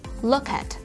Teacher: Chúng ta sẽ nối âm ở từ look và từ at